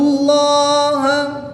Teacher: جلالت اللہ عز و جل کے لام سے پہلے حرف پر زبر ہے تو اس لام کو پر یعنی موٹا پڑھیں گے۔ الف سے پہلے حرف پر زبر ہے تو یہاں پر الف مدہ ہوگا، با کی زیر کو وقف میں ساکن کر دیں گے، اور جب اس کو ساکن کریں گے تو یہاں پر وقف کی حالت میں مد عارض ہوگی، 2 سے 3 الف تک کھینچ کر پڑھیں گے۔